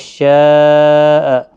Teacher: یہاں پر مد متصل ہے شاء، 4 الف کی مقدار کے برابر کھینچ کر پڑھیں گے